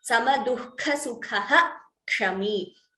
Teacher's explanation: Visarga followed by Ksha. The Visarga is chanted completely.